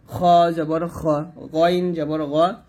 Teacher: খ এবং গইন কন্ঠনালের শেষ থেকে হবে মোটা করে